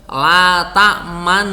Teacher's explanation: Akhirnya lalu ini domahnya ini disamarkan gitu, disembunyikan, sehingga kemudian bunyinya domah itu diisyaratkan tanpa, kok bukan bunyinya ya, harokat domah itu diisyaratkan tanpa berbunyi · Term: ismam